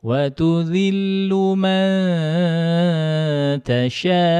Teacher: Ada hentakan sedikit, tasha'. Itu naber namanya. Harus ada ketika hamzah jatuh dalam keadaan waqaf, itu wajib dinaberkan.